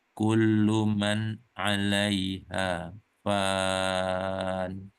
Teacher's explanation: fan ini tidak perlu didengungkan lagi, tapi berhenti saja seperti biasa